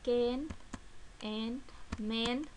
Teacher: The front vowel, the tongue is between half closed and half open, lips are neutrally open.